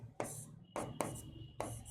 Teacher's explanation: जब हम च का उच्चारण करते हैं तो प्रिय विद्यार्थियों हमारी जीभ तालु को स्पर्श करती है। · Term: तालव्य